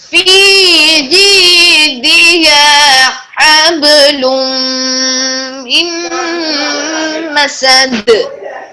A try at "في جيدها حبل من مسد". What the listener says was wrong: مسد. قلقلہ میں یہاں پہ شد نہیں ہے تو جیسے آپ نے پڑھا ہے نا حب. حب حبل من مسد.